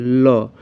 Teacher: जिसके उच्चारण में हवा जीभ के अगल बगल से निकले, तो इसे हम पार्श्विक कहते हैं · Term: पार्श्विक व्यंजन